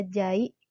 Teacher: Contohnya pada kata jai terdiri atas dua silabel, sehingga fonem A dan I terbagi pada suku kata yang berbeda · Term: deret vokal